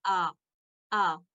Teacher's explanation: ये अलिफ और हमजा हलक के सबसे निचले हिस्से से अदा किए जाते हैं और इनकी आवाजें यकसा होती हैं